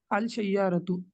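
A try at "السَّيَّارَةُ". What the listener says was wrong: अल नहीं पढ़ेंगे, अस-सय्यारतु। हाँ, अस-सय्यारतु हुर्फ शमसी। ठीक है, अस-सय्यारतु।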